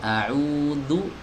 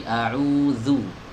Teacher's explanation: Cara menggeseknya itu ujung lidahnya dikeluarkan sedikit kemudian ditarik ke belakang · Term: huruf zal